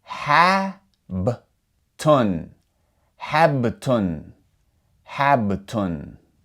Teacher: It does not have a vowel sound coming after it. So, we're just going to leave the B there with no vowel after it. And then we will move immediately to the next letter, which is the letter ta.